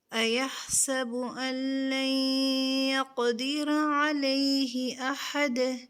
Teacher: را کو پر کریں گے اور یہاں قاف پر کلکلہ ہوگا، قاف کو ہیوی ساؤنڈ میں یعنی پر کریں گے اور را کا مخرج اس کی جگہ سے ادا کرتے ہوئے